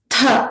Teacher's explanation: So tha is the mahaprana. Ta was the alpa prana. This is mahaprana.